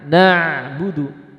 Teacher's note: Bainiyah itu mengalir sesaat. Alirkan ain sesaat. Na'budu. Tuh ada aliran sesaat.